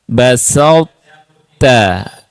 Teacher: Sifat huruf to ya, isti'lanya dan itbaqnya itu yang membuat huruf ta masih terdengar sifatnya. Tidak dibaca murni huruf ta. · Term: idgham mutajanisain